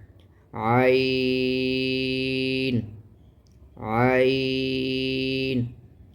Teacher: عین اکثر حلق یعنی حلق کے درمیانی حصے سے عین ادا ہوتا ہے، بڑی نرمی کے ساتھ، گلے پہ زیادہ زور نہیں دیا جاتا۔